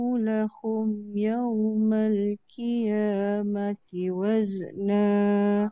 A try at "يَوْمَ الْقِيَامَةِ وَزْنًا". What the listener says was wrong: Satu lagi qi bukan ki. يَوْمَ الْقِيَامَةِ وَزْنًا.